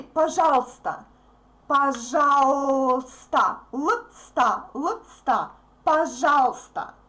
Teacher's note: We don't pronounce «y». Sometimes we don't pronounce uy. If we speak fast, we say пожалуйста, пожалуйста, лста, пожалуйста.